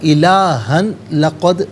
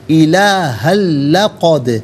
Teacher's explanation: الہن میں ہاں پر 2 زبر کی تنوین اس لام کے ساتھ ملائیں گے، لام کی آواز کو ادا کیا جائے گا۔ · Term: یرملون کا قاعدہ